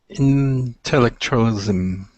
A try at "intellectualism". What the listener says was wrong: Good, good.